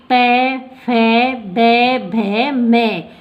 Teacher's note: अपने दोनों होठ चिपकते हैं तभी इनका उच्चारण होता है। अगर एक होठ कट जाए ना तो इनका उच्चारण आप कर देख सकते हो, इनका उच्चारण नहीं होगा। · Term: ओष्ठ